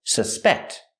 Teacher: it's a verb, the stress is on the second syllable.